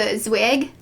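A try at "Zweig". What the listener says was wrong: Zvig. It's with a V. Pronounced with a V.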